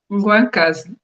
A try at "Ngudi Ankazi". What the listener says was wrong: Ngudi Ankazi. Ngwakazi é a abreviação, mas pronunciar bem. Ngudi Akazi. Vem de mãe.